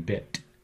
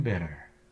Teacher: the tongue does make contact in bit but not quite in bitter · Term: flap